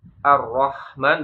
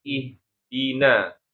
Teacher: Kalau yang ar-rahman pakainya ha tengah tenggorokan, tapi kalau ihdina pakainya ha di pangkal tenggorokan ya.